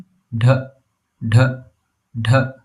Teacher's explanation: A hard du. Tongue curled back with a puff of air.